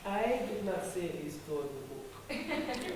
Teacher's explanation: So what does is he raises his voice at the I to ensure that you get the message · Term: placing emphasis on the I